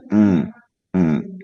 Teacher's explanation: kalau kita mengucapkan a itu ee lidahnya rendah ya. Lidahnya rendah di sini terbuka. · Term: huruf A